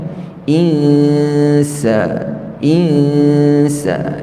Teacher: mati bertemu dengan Sin kita Panggil istilahnya adalah ikhfa Hakiki yni kita dengungkan Nun bertemu dengan Sin